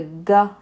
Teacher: in some dialects like in egypt it makes the ga sound the g sound